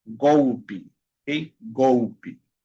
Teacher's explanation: cuando la e está al final de la palabra y no lleva acento, se pronuncia como i